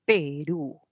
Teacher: en Perú la E es una media y la U es una alta.